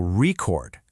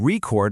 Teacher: You can have a vinyl record, stress on the first part, but then you can record a song, stress on the second.